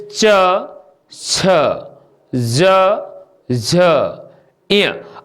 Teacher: पहले तीसरे पांचवें में कुछ हवा कम इस पर जोर दे रही होगी, लेकिन जो ही हम दूसरे और चौथे पर जाते हैं त्यों ही इस पर हवा मुख से ज्यादा निकल रही होगी।